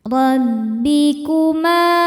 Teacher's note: Sebab ada alif didahului harakat fathah. Cara bacanya dipanjangkan dua harakat. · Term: madobii zohiri